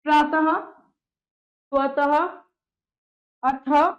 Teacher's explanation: विसर्ग ह की ध्वनि निकलती है, ह। इसका उच्चारण ह की भांति किया जाता है।